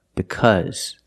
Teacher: the Au is pronounced with a short sound like cup and up